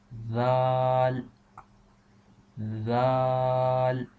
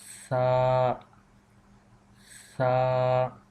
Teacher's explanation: the tip of tongue we are touching on the edge of upper teeth. One thing, remember that in this case, when we pronounce these two letters, the tongue is not going to the upside.